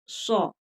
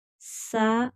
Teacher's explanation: हरूफ मुस्तालिया है तो इसको मोटा करके पढ़ेंगे। सीन की आवाज नहीं निकलेगी। सौद सौ, सा गलत है, सौ।